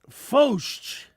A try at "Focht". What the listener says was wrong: There's no CH at the end.